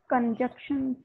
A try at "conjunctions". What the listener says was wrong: N के पास भी आनी है बीच में. Conjunctions. Con. Jan. Shuns. Conjunctions.